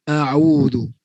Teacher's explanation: Kalau kita baca sambil lewa saja, kita tak bentuk bibir kita sesuai dengan baris atas sehingga menampakkan nipis bagi huruf hamzah, dia akan jadi tebal